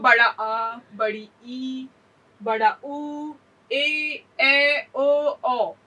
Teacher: दीर्घ स्वर कहते हैं। इनके उच्चारण में ह्रस्व स्वर से दुगुना समय लगता है।